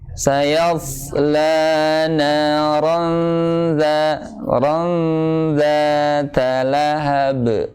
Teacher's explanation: memang harus isti'la tebal. Tapi hati-hati huruf sebelumnya jangan sampai terpengaruh, yaitu huruf ya.